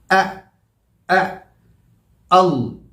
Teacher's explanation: वो बंद और खुलता है, खुल होता है और बंद होता है। तो जब हम हमज़ा की आवाज़ निकालेंगे तो टक के साथ खुलेगा। इसमें एक वाइब्रेशन है, इसमें एक झटका है, एक झटके की आवाज़ है।